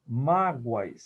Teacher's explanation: Eu tenho o fonema O representando a semivogal U e a vogal A. Como ela é tônica, e só são dois encontros vocálicos, eu tenho um ditongo oral crescente.